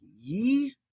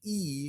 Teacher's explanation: when a word begins with Iota there's a couple of ways you can do that you can do the Y sound like ye or just do the E